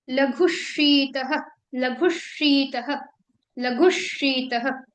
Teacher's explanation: ये जो लघु तत्र रूक्षो लघु शीतः, यहाँ पर आप नोटिस करेंगे तो लघु प्लस शीतः, ठीक है। अब इस विसर्ग को आपको कन्वर्ट कर देना है आधे श में, ठीक है। कुछ इस तरह से आपको लघुशीतः, लघुशीतः, लघुशीतः इस तरह से आपको प्रोनाउंस करना है।